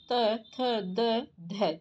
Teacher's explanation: इसका उच्चारण दंत मूल है। दंत से होता है।